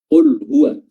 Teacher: di sini ada lam sukun bertemu dengan huruf ha. Lamnya dibaca izhar